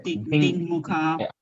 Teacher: So it's not dikmukha, it's dingmukha. Ng sound is coming there.